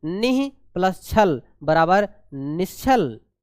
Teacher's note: विसर्ग के बाद छा आता है, तब भी आपका क्या हो जाता है, तालव्य श आदेश हो जाता है